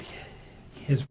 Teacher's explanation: the initial consonant sound is called a glottal fricative